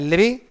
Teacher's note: दांत से निकलने वाला जो स्वर है वो है लृ